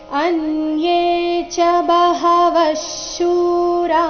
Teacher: ವ ನಂತರ ಬರೋ ವಿಸರ್ಗದ ಉಚ್ಚಾರಣೆ ಅರ್ಧ ಶರ ಬರಬೇಕು ಯಾಕಂದ್ರೆ ಮುಂದಿನ ಶಬ್ದ ಶೂರ ಶಿಂದ ಶುರುವಾಗ್ತಾ ಇದೆ